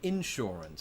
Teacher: i put the emphasis on the in instead of saying insurance which is what i would have used